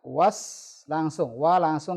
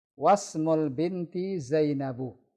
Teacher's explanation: Was langsung, wa langsung ke huruf sin. Alifnya ada, hamzah wasalnya ada, tapi tidak dibaca.